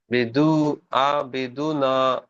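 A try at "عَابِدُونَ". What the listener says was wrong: বিদু নয়, আবিদুনা।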